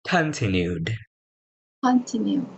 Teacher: so the stress is not on the second syllable it's on the first syllable